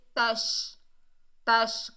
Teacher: शीन को अदा करते वक्त हमारी ज़बान फैलती हुई, हमारी आवाज़ फैलती हुई महसूस होती है।